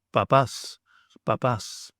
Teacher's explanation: So when we have a mi and a p together, so that's an M sound and a P sound together, we want an English B sound or an MB sound, as in the Greek word papas, papas.